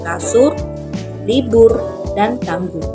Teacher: direalisasikan sebagai bunyi u kapital apabila berada pada silabel tertutup